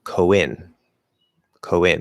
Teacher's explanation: it's an o with a small w linking to e